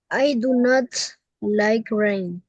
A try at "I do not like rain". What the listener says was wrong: Perfecto.